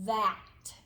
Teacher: a noisy sound a voiced sound and you have to stick your tongue out for this one too